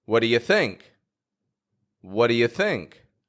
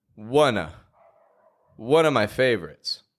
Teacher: Those grammar words are using a quick and quiet schwa. They're just giving it a weak sound.